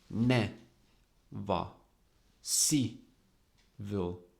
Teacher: never and civil are both disyllabic. Ne, va, si, vo. But in both cases, the accent is on the first syllable.